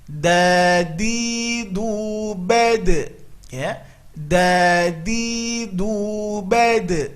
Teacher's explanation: Bedakan makhraj huruf dalnya kita, ya, dengan dalnya orang Arab itu sedikit berbeda. Maka ini ujung lidah tempelkan ke usul ats-tsana al-ulya